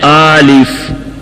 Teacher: یہاں پر اکثر لوگ پڑھتے ہیں آلف, آ کو لمبا پڑھتے ہیں